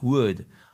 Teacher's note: Et le L dans would ne se prononce pas